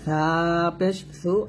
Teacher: সা আমরা জিহ্বাটা উপরে দাঁতে লাগাবো পাতলা করে